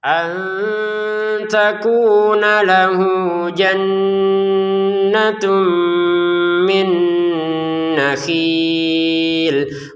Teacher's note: kita baca hu panjang dua harakat lalu dilanjutkan ke berikutnya kata jannah